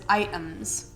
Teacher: he uses i think what's called a glottal t which is kind of like dropping it